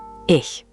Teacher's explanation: The key is that CH sound. It's not a hard K sound. Think of it like a soft hissing cat made at the back of your throat.